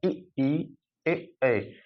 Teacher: ये हमारा अग्र अर्थात जीभ की आगे भाग से